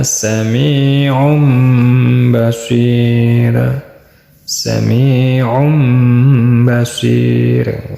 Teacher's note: Asal katanya sami'un basir, kena pelanggaran hukum tajwid yaitu hukum iqlab, jadinya dibacanya sami'um basir.